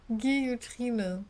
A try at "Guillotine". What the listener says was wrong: Ne, ohne R. Tine. Guillotine.